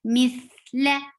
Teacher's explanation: tha will get rukhawa. Rukhawa is the flow of sound. Mithla, la is short.